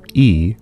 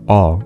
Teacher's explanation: if you again say the vowel e your tongue is fairly far forward in your mouth but if you say all you pull it back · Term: backness